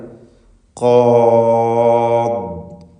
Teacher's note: ദ്വാദ് റഖാവത്തുള്ള ഹർഫാണ് എന്നത് പ്രത്യേകം ശ്രദ്ധിക്കുക. ലൂസാക്കി ഉച്ചരിക്കപ്പെടുന്നു.